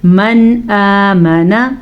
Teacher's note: نون ساکن کے بعد حمزہ آ گیا ہے تو نون ساکن کو ہم ظاہر کر کے بغیر غننے کے پڑھیں گے